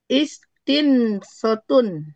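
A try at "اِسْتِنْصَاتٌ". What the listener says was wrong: Kalau pola istaf'ala panjang. Istinsotun. Yang pola tafa'ala yang nggak panjang. Yang kalau istaf'ala panjang.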